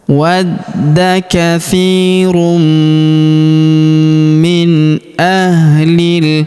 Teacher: Kemudian tanwin un huruf run bertemu huruf mi berharakat tasydid. Maka tanwin unnya melebur masuk ke huruf mi. Kita tahan dan kita tekan serta kita dengungkan dua sampai harakat.